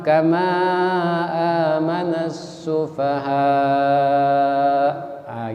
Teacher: Jadi kalau dia berhenti, mad wajib muttasil kalau berhenti lebih panjang. Kalau dia tidak berhenti 5.